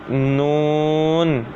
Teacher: زبان کا کنارہ اور انیاب سے ثنایا تک کے دانتوں کی جڑوں سے ادا ہوتا ہے